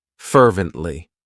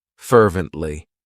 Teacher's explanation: It has three syllables and the stress is on that first syllable.